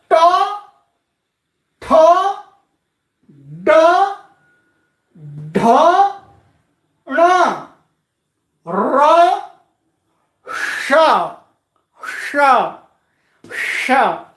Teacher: मूर्धा में जिह्वा का अग्रभाग मुड़ करके स्पर्श करेगा इनके उच्चारण में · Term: मूर्धन्याः